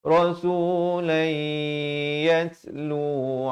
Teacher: Di sini masuk berserta dengung. Asalnya rasulan. Tapi datang ya jadi idgham bi gunnah.